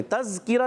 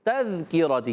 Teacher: تا مشدد ہے اور تا مشدد ذرا رک کر ادا کریں گے. تذکرتی، تا کو زال سے ملائیں گے، زال کو زا نہیں پڑھیں گے، تذکرہ نہیں، تذکرتی.